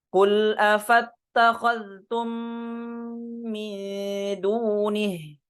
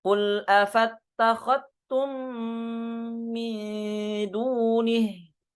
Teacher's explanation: dengan mengidghamkan huruf zalnya ke ta, dileburkan ke ta. Jadi dibaca afattakhadtum.